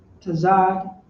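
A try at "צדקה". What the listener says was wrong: You got to pronounce the da.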